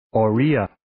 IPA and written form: ɔː'riːjə (Oriya)